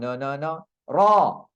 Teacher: ada getaran dan baris atas ra